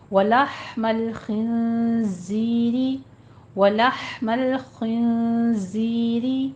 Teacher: ولحم خا کو پر پڑھنا ہے، نون کے اوپر اخفا حقیقی ہو رہا ہے، زائے کی آواز کو سیٹی کے ساتھ ادا کرتے ہوئے آگے یا مدہ ادا کریں گے اور را بھی مرقق ہو جائے گی، باریک پڑھنی ہے۔